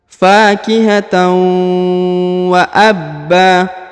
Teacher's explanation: Huruf ba ditahan, ditekan, lalu dipanjangkan 2 harokat dan berubah menjadi ba, bukan lagi ban ya, karena berada di ujung ayat atau di ujung bacaan.